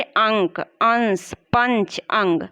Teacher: अनुसार के उच्चारण में नाक से ज्यादा सांस निकलता है और मुख से कम सांस निकलता है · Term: अनुस्वार